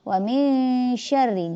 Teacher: Jadi nun mati ketemu shin itu ikhfa. Ketika membaca mulut kita harus siap-siap mau ke shin.